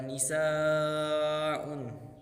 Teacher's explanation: Kemudian ada nisaun, di situ jelas adalah mad wajib ketika alif bertemu hamzahnya di depan dipanjang 6 harakat